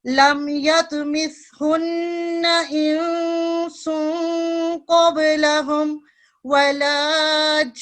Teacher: गुन्ना इधर करेंगे, इसको लंबा भी करेंगे, ये मद लाजिम होती है, इसको लंबा भी करें, बड़ी मद है, और बाद में नून मुशद्दद है, नून मुशद्दद पे गुन्ना करते हैं 2 सेकंड के लिए